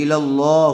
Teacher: آگے لکھا ہوا ہے قف، یعنی ٹھہریے، وقف کیجیے، تو جب یہاں پر وقف کریں گے تو ہا کو جزم دے کر سانس توڑ دیں گے، الا اللہ ہو جائے گا۔